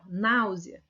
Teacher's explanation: a vogal que mais se destaca é o A, não é o U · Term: semivogal